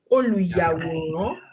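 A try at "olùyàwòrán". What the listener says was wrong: Yeah.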